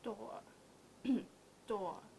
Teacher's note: So no R, a little longer.